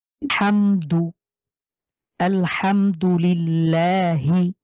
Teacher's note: লামের উপরে আমরা দেখতে পাচ্ছি খারা জবর রয়েছে এখানে আমরা এক আলিফ টানবো